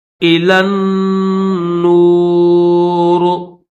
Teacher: اس یا کو نہیں پڑھیں گے، پھر یہ الف بھی نہیں پڑھیں گے، لام کو ڈائریکٹ نون کے ساتھ ملا دیں گے